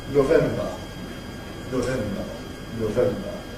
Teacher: Now in the case when the strong vowel is [ oʊ ], ‘November’ [ noʊˈvembə ], the corresponding weak vowel is a sort of rounded [ o ] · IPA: noˈvembə